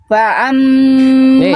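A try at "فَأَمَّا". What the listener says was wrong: jangan jadi ain. Jangan fa'am. Fa'amma.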